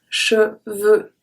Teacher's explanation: So ES make the sound E, and then we keep the E in the middle, and we don't pronounce the X at the end. EU is an open sound.